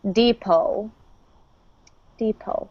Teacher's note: this is a word we borrowed from French, and the T is silent